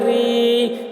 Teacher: یو، را یا زیر ری، یا ساکن سے پہلے زیر ہے، یا مدہ ہوا، اس لیے یا مدہ کو ایک الف کے برابر کھینچ کر پڑھیں گے